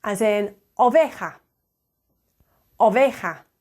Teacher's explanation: it's like a shorter sound of the English o